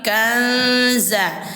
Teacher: samar itu suara nun ini kita samarkan ke huruf zai.